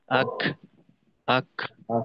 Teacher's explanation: কাফ এবং তায়ের ক্ষেত্রে কিন্তু যখন জজম থাকে ওই সময় শেষে একটু বাতাস বের হয়, অর্থাৎ আক, আক, এরকম।